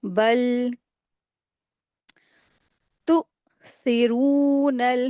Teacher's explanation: بل تو سیرون یہاں پر نا حمزہ ساکنہ آیا ہے، تو اس کو جھٹکا دے کے ادا کریں گے